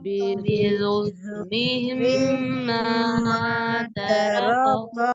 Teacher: میم کے اوپر آپ غنہ کریں گے اور اس کو مد بھی کریں گے